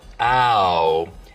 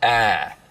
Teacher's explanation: smoothing is when you take a diphthong, like ow, and smooth it out so it's just one sound, ah.